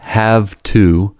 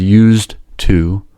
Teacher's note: With this knowledge, we can understand why “have to” and “used to'' are pronounced as /haftu/ and /justu/. The voiced /v/ and /z/ in “have to” and “used to'' respectively are followed by a voiceless consonant /t/. In this situation, /v/ and /z/ become voiceless /f/ and /s/.